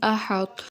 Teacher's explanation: طا کی موٹائی کو برقرار رکھتے ہوئے تا پڑھائیں، طا میں قلقلہ اور سکتہ بھی نہ ہونے دیں